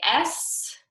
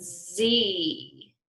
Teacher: you don't feel any vibration in your throat right well you shouldn't for s but for our Z sound you feel that vibration